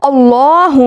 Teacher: अल्लाहहु में लफ्ज़ जलाला के लाम को पुर यानी मोटा अदा किया जाएगा। क्योंकि अल्लाह के लाम से पहले जो हुफ ऐन है उसके ऊपर ज़बर है।